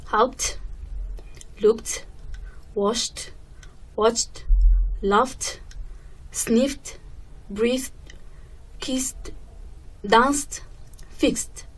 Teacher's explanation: the sound of ed becomes t